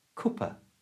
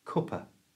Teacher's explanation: change the last A for the schwa sound, which is the little sound that's so common in English. So it's not cup a, it's cup a.